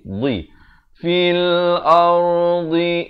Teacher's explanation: makhrajnya di tepi lidah, kanan ataupun kiri